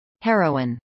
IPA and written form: ˈheroʊɪn (heroine)